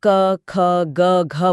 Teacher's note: क बोलते समय हथेली पर हवा का बहुत हल्का सा स्पर्श होगा। यह अल्पप्राण है यानी कम हवा। ख बोलते ही हवा का एक तेज झोंका हथेली से टकराएगा। यह महाप्राण है यानी ज्यादा हवा। ग पर फिर हवा कम हो जाएगी और घ पर फिर तेज।